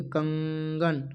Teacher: कंगन जब बोलोगे कंगन तो नाक से जो है आवाज आएगी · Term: अनुनासिकता